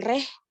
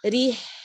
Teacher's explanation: Ila fihim setiap kasroh sempurnakan turun rahangnya. Fihim rih jangan reh tapi rih ro-nya tipis.